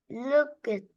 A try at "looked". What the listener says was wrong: Not look it, looked. Okay, because it's only one syllable. If the word is only one syllable, you pronounce ed as t. Looked, loved.